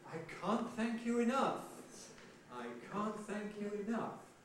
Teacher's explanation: I can't thank you enough, but no pitch prominence. So we've got an onset accent on can't, a nuclear accent on enough, which gives us prehead, head, and nucleus.